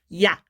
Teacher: 이 야 같은 경우에는 사실 이에서 아로 빠르게 빠르게 이 입술 모양을 바꾸면서 내는 게 바로 야예요. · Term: 이중 모음